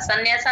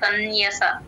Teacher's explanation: నా కింద నా ఒత్తు య వత్తు రెండు వినపడాలి